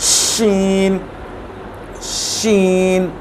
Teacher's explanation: जो हमारी जो ज़बान का टिप वाला हिस्सा, उससे जो थोड़ा सा पीछे का हिस्सा है उसको ऊपर लगाएंगे सख्त जगह पे, तालू पे, तो ये शीन अदा होगा।